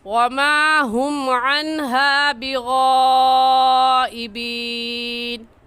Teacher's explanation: کیونکہ حروف مدہ جو کہ الف مدہ ہے، حروف مدہ کے بعد حمزہ اسی کلمے میں ہے، اس وجہ سے اس مد کو مد متصل اور مد واجب کہیں گے، اور اس مد کو 4 الف کے برابر کھینچ کر پڑھیں گے، نہ اس سے کم اور نہ ہی اس سے زیادہ۔